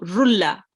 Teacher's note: Okay, so appears after a noon sakin or tanween, no nasal sound will be assimilated into the next letter. Okay, only one stroke of tanween will be used in assimilation.